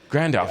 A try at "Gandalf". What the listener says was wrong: Say that again. Take out the R.